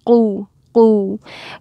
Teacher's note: And this one, remember, we're still rounding our mouth, but we're also still using the back of the tongue, hitting the soft palate. So qu. Make sure you round your mouth when you say that.